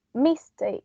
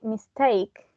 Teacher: The stress is on the second syllable, take